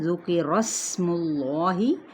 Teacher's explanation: را کی زبر کو سین پہ ملائیں اور ساتھ میں سیٹی کو واضح کریں